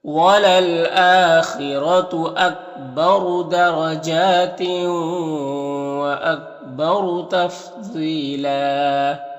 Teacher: یہاں پر دو زبر ہے تو ایک زبر کے ساتھ الف پڑھیں گے وقف کی صورت میں